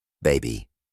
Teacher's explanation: Se pronuncia con la boca relajada, sin un esfuerzo particular. Tercero, en la palabra baby, la I es más tensa y prolongada. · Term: I tensa